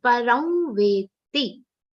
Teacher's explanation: Param anuswar is pronounced like a nasal vowel consonant.